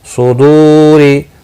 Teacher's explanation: صاد مستعلیہ ہے، دو واو مدہ ہے، را زیر کی وجہ سے باریک پڑھنا ہے